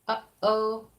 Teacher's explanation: The throat is where you get the an H or or like in the word uh-oh, you have that really sudden start. That's the glottis releasing like really fast, kind of like a stop.